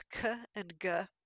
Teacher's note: they're pronounced with the back of your tongue raised up towards the roof of your mouth and it's some of these sounds that are pronounced farther back